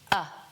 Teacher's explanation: uh uh It's so neutral in fact that your mouth barely has to move to make it. Your jaw is relaxed. Your tongue is in the middle of your mouth doing nothing in particular, and you let out a tiny bit of air. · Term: schwa